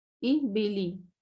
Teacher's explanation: یہ یاد رکھیں ہمیشہ، اس کے ساؤنڈ ای میں آئے گا، زیر کی آواز ای میں آئے گی، اس میں اے میں نہیں آئے گی